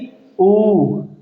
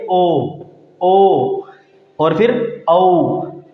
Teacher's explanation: इनका उच्चारण करते समय हमारे जो होठ है वो गोलाकार आकृति ग्रहण कर लेते हैं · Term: वृत्तमुखी स्वर